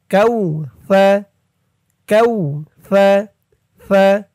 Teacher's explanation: জিব্বার মাথা উপরের দাঁতের মাথার সাথে লাগবে সার উচ্চারণটা করার সময়।